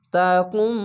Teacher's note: ছোট্ট মিম আছে, মিমকে ধরবেন। এটি হচ্ছে ইকলাব গুন্না।